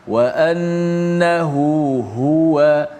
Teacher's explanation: hu pertama tu dipanjangkan dua harakat kan, huwa, wa annahu huwa, biar ha kedua tu pun jelas. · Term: mat dua harakat